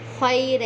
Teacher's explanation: یہاں پہ یا ساکن سے پہلے زبر آ رہا ہے، یہاں پہ یا لین ہو رہی ہے